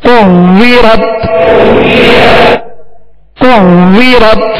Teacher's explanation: واو میں ہونٹ گول کریں گے اور یہ واو مشدد ہے لہذا جمع کے ساتھ پڑھیں